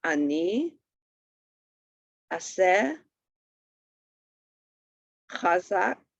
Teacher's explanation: It sounds like a hurried a or e. So e as in bed, or a as in yacht, or ed, or odd. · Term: hurried vowel sound